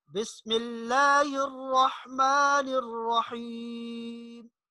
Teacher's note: را کو تھوڑا سا پر پڑھنا ہے، موٹا